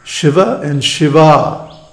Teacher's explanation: the difference is only in the length of the final vowel